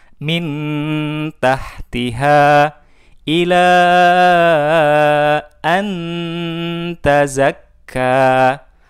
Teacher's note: nunnya kita baca jelas karena huruf ta memiliki tempat keluar yang sama dengan huruf nun